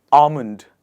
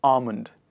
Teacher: the trick to pronounce it is, by removing the ‘L’ sound in the word